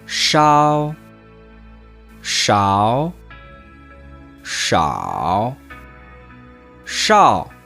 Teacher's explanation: AO isn't quite as wide of a sound. Your mouth won't go as wide as you're saying it. It's more rounded. So instead of ow, it's ow.